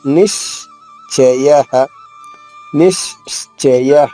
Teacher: ఇక్కడ షా చ 2 అక్షరాలు కలిసిన అక్షరం ఇది. సో నీ పైన ఆఘాతం తీసుకుంటూ షా 2 షాలుగా చెప్తూ